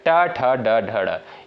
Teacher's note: लेकिन आपका जो ट दिया है ये दोस्तों आपका मूर्धा से उच्चारित होने वाला वर्ड है। ट ठ ड ढ ड़, इनका उच्चारण जो है आपका मूर्धा से होता है।